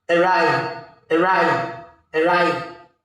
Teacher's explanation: So, you're going to stress ride.